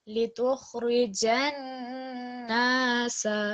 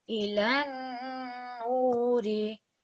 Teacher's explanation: So in both of those places, we want more emphasis on the shadda, and also we want more of a ghunna sound produced.